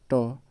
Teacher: लेकिन ट जो है ट इसको मुर्धा से बोलते हैं